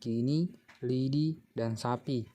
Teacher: fonim I fonim ini mempunyai dua macam realisasi yaitu yang pertama direalisasikan sebagai bunyi I tinggi atas tak bundar depan apabila berada pada silabel terbuka atau silabel tak berkoda